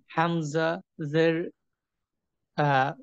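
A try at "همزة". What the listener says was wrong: আপনার হামজাটা অনেকটা হার মতো শোনায়। এটা মনে হয় পুরনো সমস্যা। হামজা এবং হা দুটো ভিন্ন জিনিস।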